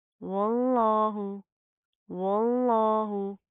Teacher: लफ्ज़ अल्लाह को यहाँ पर मोटा पढ़ेंगे, क्यों? क्योंकि उसके माक़ाबल क्या है, वाव के ऊपर ज़बर आ रही है, ठीक है।